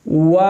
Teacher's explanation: आखिर में उ नहीं करना। वऊ नहीं करना। ठीक है? जस्ट आपने हठों को गोल करना है और आवाज खत्म कर देनी है।